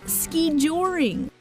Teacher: the narrator put stress on the second syllable